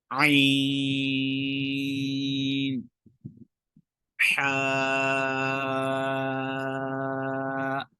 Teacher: تیسرا مخرج ہے عین اور حا۔ عین اور حا جو ہے یہ وسط حلق سے، درمیان حلق سے ادا ہوتے ہیں